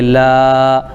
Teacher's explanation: لام پر کھڑا زبر ہے الف مدہ کے برابر ہوگا، اس کو ایک الف کھینچیں گے